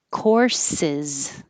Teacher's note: courses the second s will sound like a z if it's a singular course it sounds the same as course